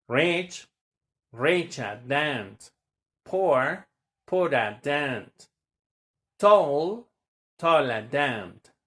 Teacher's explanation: the moment that we have this ending er, the sound that's gonna be like the schwa sound that we wanna have.